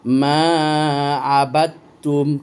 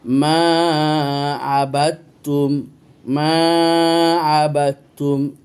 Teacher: এখানে দাল সাইলেন্ট হয়ে যাবে, কারণ দাল পড়ার পর 2টা তা আছে এখানে, এই জন্য তাসদিদ দিয়েছে। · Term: মুতাকারিবাইন